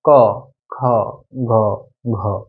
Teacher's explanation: সবগুলা ধ্বনি উচ্চারণ করতে গেলে আমার একবারে কণ্ঠ থেকে ক খ গ, একবারে আমার কণ্ঠ থেকে আসতেছে। এই জন্য এইগুলো হয় কণ্ঠধ্বনি বলা হয়, এদেরকে বলা হয় কি কণ্ঠধ্বনি।